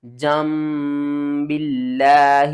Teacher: لفظ اللہ سے پہلے دیکھیں با کے نیچے زیر ہے، تو لفظ اللہ کو آپ نے باریک کر کے پڑھنا ہے